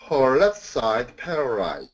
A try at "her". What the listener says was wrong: And keep the er, her. I'm hearing more of a haw. Er. Sir. Her.